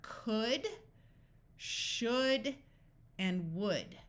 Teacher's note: o u has a different sound this sound of uh